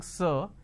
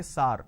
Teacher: So instead of saying sir, they say sar. So this is a pronunciation mistake.